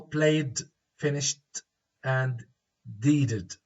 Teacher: played, it's D; finished, it's T; and deeded, it's id. Deeded, id. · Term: different pronunciations